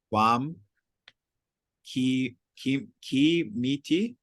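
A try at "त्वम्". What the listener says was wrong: Yeah, try to get that a little shorter. So it's not twam, it's twum. So twam would actually be in the accusative. So twum.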